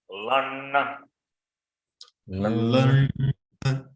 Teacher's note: Here la is with the Chandra Bindu. Nasalized one.